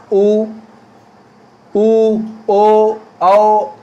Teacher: गोलाकार में जब हम बोलेंगे तो होंठों की आकृति गोल होगी।